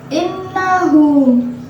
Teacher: ada nun yang bertasjid, dibacanya dengan dengung, 2 ketukan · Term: gunnah